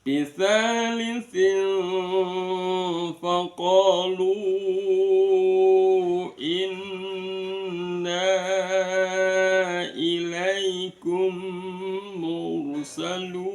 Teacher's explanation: Bunyi n-nya disamarkan antara nun sama fa, seolah-olah ada bunyi mim ya, tapi bukan bunyi mim, seolah-olah aja. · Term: ikhfa